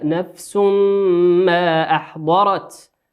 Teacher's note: تنوين أتى بعده حرف الميم والميم من حروف الإدغام بغنة تؤن بمقدار حركتين. وقوله سبحانه وتعالى شيطان الرجيم تنوين أتى بعده